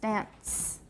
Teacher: You can be careful and say dance, but usually that T is in there.